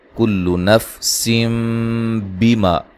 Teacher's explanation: یہ نون تنوین کا اقلاب ہے. ٹھیک ہے. نون کو میم سے بدل کے پڑھیں گے.